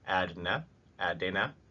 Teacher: this is because the ren is more more at timed basically the d in there takes up the same amount of time whether it contains a vowel or not